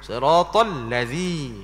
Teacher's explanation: maka pada Zal tu jangan beri tasdik Jangan beri jadi macam ada sabdu